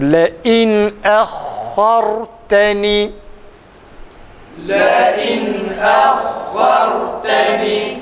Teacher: her iki hemzede de boğazın açılıp kapanmasıyla ve şiddetli e sesinin çıkması gerekir.